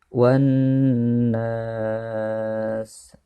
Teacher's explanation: alif lamnya tidak terbaca tetapi langsung dimasukkan ke dalam huruf yang di depannya, yaitu huruf nun. Dan juga nun ini ditasydid maka disebut dengan gunnah, yaitu ditekan dan juga didengungkan 2 harokat. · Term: alif lam syamsiah